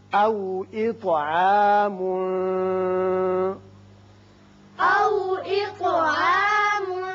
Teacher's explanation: یہاں طا کی صفت قلقلہ اور اس کو پر بھی پڑھیں گے